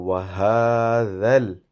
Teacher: dhal should be pronounced with your tongue touching your top teeth very lightly, and then you pronounce dhal, so it becomes a soft sound.